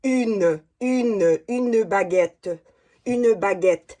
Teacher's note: le U, c'est plus en devant des lèvres et plus arrondi.